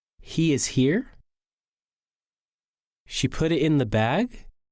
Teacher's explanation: sometimes statements also end with rising intonation when the speaker has doubt.